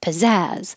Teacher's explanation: have stress on the second syllable